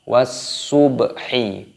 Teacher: ba sukun, qalqalah dipantulkan